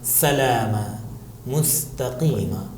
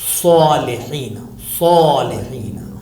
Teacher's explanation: سین ہے، پتلا ادا کیا جاتا ہے، سلام، مستقیم، لیکن صاد کو موٹا ادا کیا جاتا ہے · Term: تفخیم و ترقیق